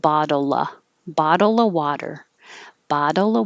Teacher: if you wanted to say bottle of water take out the of and just make an uh